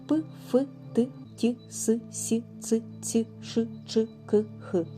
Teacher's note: шумні глухі приголосні звуки це приголосні звуки які утворюються за участю лише шуму